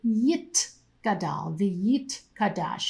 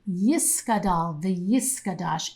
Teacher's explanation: You can hear that there's a T sound instead of a S sound.